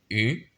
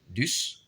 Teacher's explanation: le U se prononce un petit peu avec le nez. C'est pas un, c'est pas U, c'est U.